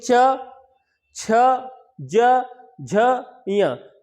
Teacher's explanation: तो हमने देखा कि हमारी जिह्वा किसको स्पर्श किया? ऊपर वाले तालु को स्पर्श किया। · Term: चा वर्ग